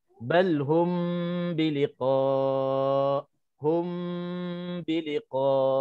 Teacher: Okey, bacanya dengung 2 harakat. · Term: ikhfa syafawi